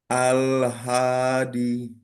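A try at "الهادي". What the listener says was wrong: D-nya dua harokat. Al.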